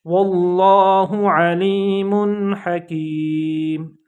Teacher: लफ्ज़ अल्लाह के लाम को थिक साउंड में पढ़ा, मोटी आवाज़ में पढ़ा है।